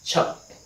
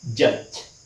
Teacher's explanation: produced in a kind of mix that involves a stop sound and a fricative sound